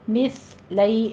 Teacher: مس سیٹی کی آواز نہیں آنی چاہیے